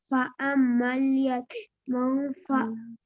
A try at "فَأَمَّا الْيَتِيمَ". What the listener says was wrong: فَأَمَّا الْيَتِيمَ، یتیم نہیں، ما میم زبر ما، فَأَمَّا الْيَتِيمَ، ہاں یتیمہ میم زبر ما، لمبا نہیں ہوتا ہے زبر۔ فَأَمَّا الْيَتِيمَ،